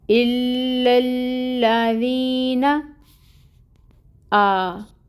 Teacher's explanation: अलिफ से पहले ज़बर की हरकत है तो 2 काउंट्स लंबा खींचेंगे। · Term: अलिफ मद